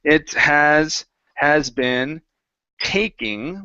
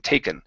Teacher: Okay, so if it were me and I were going to naturally say this phrase or this sentence, I would say it has been taking, with an E sound, taking up a lot of my time. Okay, so make sure that when you say taking, it's an E, a long E sound. You're really pushing your tongue to the top of your mouth instead of saying taken.